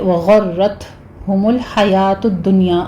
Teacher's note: اور آگے وغرتہم الحیاۃ الدنیا غین کو پر پڑھنا ہے. را تشدید والی ہے مفخم پڑھی جائے گی تا پر ہمس ہوگا.